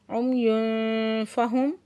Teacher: तनवीन की आवाज़ को छुपा लेना है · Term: इक्फ़ा